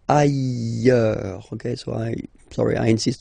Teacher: final S not pronounced, and then you've got this y sound